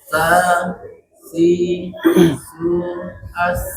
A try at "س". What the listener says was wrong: Nah, di sini belum ada sofirnya. Ada bunyi tajam. S.